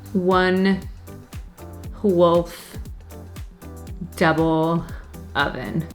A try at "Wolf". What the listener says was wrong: You're saying wolf? Wolf. Wolf. You're saying an H in there.